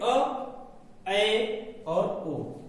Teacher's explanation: इसमें मुख द्वार लगभग आधा खुला रहता है। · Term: अर्धविवृत